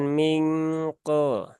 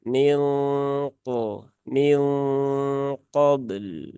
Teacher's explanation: Nah, jadi sejak awal didengungkan, nah, dia sudah menebal ya, bukan ketika masuk huruf qafnya, tapi sejak awal dengung di sini dia sudah ditebalkan suara dengungannya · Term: ikhfa yang tebal